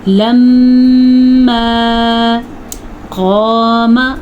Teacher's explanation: الف مدہ اور موٹا قاف، الف بھی ادا کرنا ہے اور موٹا قاف بھی ادا کرنا ہے۔ البتہ میم کو ذرا بھی ہم لمبا نہیں کریں گے، بعض لوگ پڑھتے ہیں قاما تو وہ غلط ہے۔